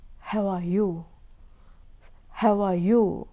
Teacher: how and you are stressed this ah is not stressed so here ah is nothing but it is a uh schwa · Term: schwa sound